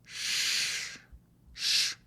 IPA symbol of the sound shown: ʃ